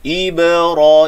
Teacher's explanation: ibra, i satu harakat, ba ini qalqal, ba sukun jadi qalqalah, ba bila sukun saja terus dibaca dengan qalqalah , ibra itu bunyinya, ibra satu harakat, satu harakat ra dua